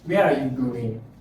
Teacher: so it has a falling intonation